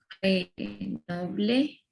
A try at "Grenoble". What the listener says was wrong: C'est Grenoble. Grenoble. En français, je vous recommande de ne prononcer la E à la fin. En français, on ne prononce pas la E. Le E.